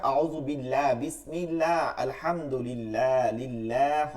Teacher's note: আল্লাহ শব্দের মাঝের লামের ডানে জের হইলে, জের হইলে ওই আল্লাহ শব্দকে চিকন করে পড়তে হয়